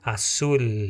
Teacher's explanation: Você viu que a palavra azul nós não vamos ler com Z e nem com U, né? Esse L ele fica a língua no palato.